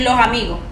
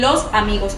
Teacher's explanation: la S en el subdialecto paisa no se aspira ni se pierde. Por ejemplo, si voy a decir los amigos, eh los en la costa pueden decir los amigos, pero en el en el acento paisa dicen los amigos, o sea, ellos tratan de que la s sí se se diga correctamente como es.